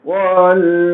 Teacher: یہ ضاد بہت ہی مرحلے وار ادا ہوتا ہے اور حروفوں کے مقابلے میں طویل ادا ہوتا ہے. جیسے آپ اگر والارض پہ رکیں گے تو والارض، یہ آواز جاری رہتی ہے اس کی. · زبان کے دائیں کنارے کو اوپر کے داڑوں کو لگا کر اس کو ادا کرنا پڑتا ہے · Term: مستطیلہ